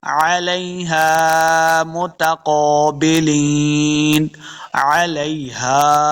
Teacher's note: ہا کو حلقے نچلے والے حصے سے ادا کریں گے۔